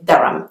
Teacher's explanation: Even though there is an H in the middle, it's not actually pronounced